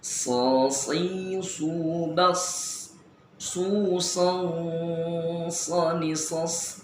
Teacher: adanya tambahan nafas yang berdesis pada huruf so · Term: as-sofiru